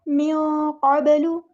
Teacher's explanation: یہاں پہ نون ساکن کے آواز کو چھپا دیں گے، اخفا ہو رہا ہے، قاف پورا ادا کریں گے، با ساکن ہے، یہاں پہ قلقلہ ہوگا.